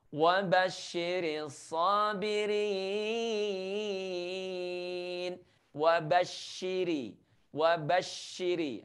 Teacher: Selain ada desisnya, dia juga memiliki tanda tasydid ya, sehingga desisnya semakin kuat.